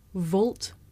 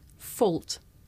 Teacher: You may find it difficult to tell the difference between this voiced sound, v, and its voiceless partner, f.